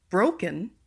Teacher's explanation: For number 2, broken, the BRO is stressed.